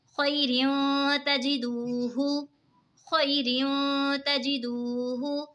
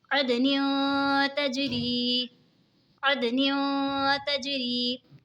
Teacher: इक़फ़ा होगा यानी गुन्ना करके पढ़ेंगे।